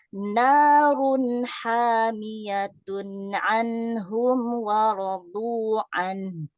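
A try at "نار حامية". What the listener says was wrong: Mantap Bu, alhamdulillah sempurna.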